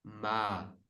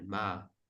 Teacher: there's a tiny bit of lowering of the tone in the end of the word. Ma the end a is a bit lower than the first ma but it's generally kind of middle is low tone. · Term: middle tone